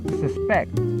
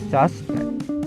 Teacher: having the stress on the last syllable depicts the word as a verb